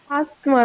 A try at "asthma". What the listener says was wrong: TH silent, ஆஸ்மான் ரெண்டு பேருமே TH remove பண்ணிட்டாங்க, பிரிட்டிஷ்காரங்களும் சரி அமெரிக்கன்ஸும் சரி. ஏன் இது திருப்பி சொல்றேன்னா, இந்த மாதிரி முக்கியமான வார்த்தை ஆஸ்மான்னு அவங்க குயிக்கா சொல்லிட்டு போயிடுவாங்க. நம்ம ஆஸ்மான்னு நம்ம ஃபிட்டாக ஆக மாட்டோம், ஏன்னா நம்ம வேற ஒரு உச்சரிப்புல இருக்கோம்.